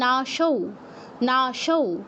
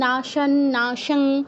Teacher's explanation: অনুস্বারের জায়গায় জাস্ট উ এর মতো সাউন্ড হবে, নাশৌ। এখানে কিন্তু আপনি নাশান, নাশাং, তারপর নাশাল এগুলো করলে ভুল।